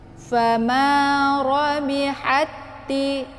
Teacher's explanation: Jadi ketika ada ta sukun bertemu dengan ta yang berbaris, ada huruf yang sama-sama dari segi sifat dan makhrajnya, maka itu dinamakan dengan idgham mislain. Cara bacanya, ta yang pertama itu dimasukkan ke dalam ta yang kedua. · Yang seharusnya kalau ta sukun kita bacanya hamas, haj gitu ya. Tapi kalau misalkan sudah kita idghamkan ke dalam ta yang kedua, maka sifat hamasnya itu hilang ya · Fama rabihati. Jadi cara bacanya ditekan ha-nya langsung masuk ke dalam ta yang kedua ya. Ta ini yang sifatnya hamas itu udah hilang ya.